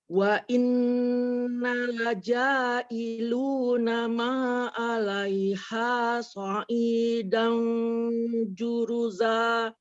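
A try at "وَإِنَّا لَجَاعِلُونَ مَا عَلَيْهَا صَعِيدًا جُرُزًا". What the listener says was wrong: Wa innanya tadi dibaca pendek, harusnya panjang.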